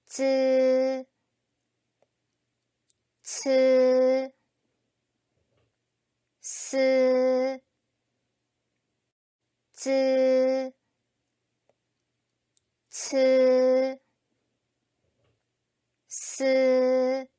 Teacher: 혀끝을 윗니에 뒤쪽에 붙였다 떼거나 가까이 대고 내는 소리입니다.